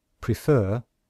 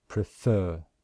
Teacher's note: Can you hear that we stress the second syllable? And in IPA, we show that with this symbol here to show that this is the syllable which we stress, prefer, prefer.